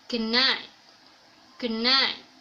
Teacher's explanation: In a rapid speech, usually native speaker says good night, good night. The plosive t becomes nasal n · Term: assimilation of manner